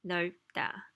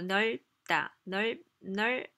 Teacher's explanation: B kind of disappears, and what happens is you pronounce 널 for sure, and then B, you make that close your lips and hold in the air.